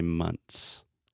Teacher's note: I actually do not say the th